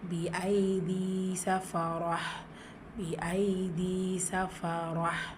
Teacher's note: சஃபரா ரா ஃபத்ஹா பச்சு வந்திருக்கு, வல்லினப்படுத்தி ஓதணும்.